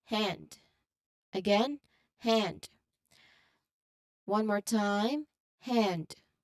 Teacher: The N sounds blend directly into the D sound at the end of the word.